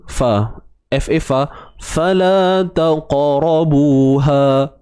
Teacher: Huruf qaf yang mati di tengah-tengah bacaan. Okey, so kat sini qalqalah sughra. Ada lantunan dia tapi kecil je, santai je bunyi dia.